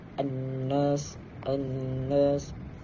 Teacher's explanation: Annas nun syaddah. Yakni kita membaca dengan ghunnah. Al-ghunnah dengan dua harakat.